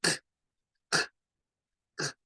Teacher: el sonido de la letra K se hace más como aspirando aire y expeliéndolo. No hacemos vibración, es nada más como k, no es vibrante.